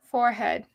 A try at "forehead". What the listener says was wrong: It's not spelled with an ah. It's or. It's a or. There's an or in the middle of it.